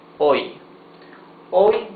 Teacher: H is mute, so you pronounce the O and the Y.